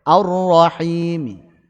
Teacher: Raum 1 cara saja, yaitu 2 harokat saja.